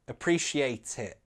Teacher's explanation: I didn't say appreciate it, I glottalized the final T